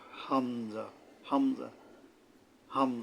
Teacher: শক্তভাবে আদায় করতে হয় এটা এবং এটা ফলকের গোড়াত থেকে হামজা হলকের শুরুর থেকে শক্তভাবে আদায় হবে হামজা হামজা হামজা মানে হলকের গোড়ার থেকে গোড়ার থেকে শক্তভাবে বা